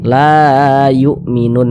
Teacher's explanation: Kalau ini mad tabi'i tidak ada berjumpa dengan huruf hamzah, tidak, maka ini mad tabi'i, ya, tidak berubah namanya. Mad tabi'i panjangnya 2 harokat. La yu'minun, nun dibaca panjang.